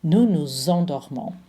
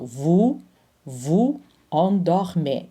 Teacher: So this S connects to the E with a Z sound. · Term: liaison